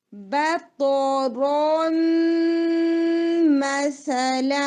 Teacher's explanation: یہاں پر ہم ادغام کریں گے. ٹھیک ہے، نون میم کے اندر مرج ہو جائے گا اور لمبا غنہ کریں گے